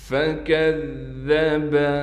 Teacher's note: فکذب، کاف کو ذال سے ملائیں گے، کاف کو بھی باریک کر کے پڑھیں گے اور ذال کو بھی باریک نرم کر کے پڑھنا ہے، تشدید کی وجہ سے تھوڑا ٹھہراؤ کریں گے